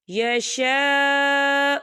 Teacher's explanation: مِمَّا یشاء، یہ دیکھیے خالد سے پہلے زبر ہے اور اس پر مد بھی ہے، تو ہم اسے 4 حرکت کے برابر کھینچ کے پڑھیں گے